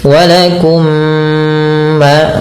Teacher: cara membacanya masukkan mim yang pertama kepada mim yang kedua dan ditahan. Walakum ma, baru dilepas. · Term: idgham mimi